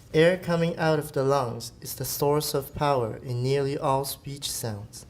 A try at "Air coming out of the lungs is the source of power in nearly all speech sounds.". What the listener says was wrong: That was really professional.